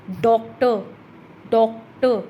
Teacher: डो higher जा रहा है, तो इसके फर्स्ट सिलेबल पर स्ट्रेस हो रहा है